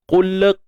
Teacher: Huruf qaf kita baca dengan tebal, kemudian matikan lam tanpa unsur tawallud, bunyi beranak.